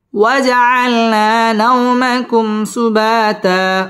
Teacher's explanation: দুই জবরের বামে ওয়াকফ এক আলিফ টান দিয়ে ওয়াকফ করতে হবে